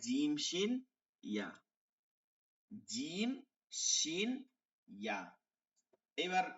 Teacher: 6 নম্বর মাখরাজ জিহ্বার মধ্যখান তার বরাবর তালুর সঙ্গে লাগায়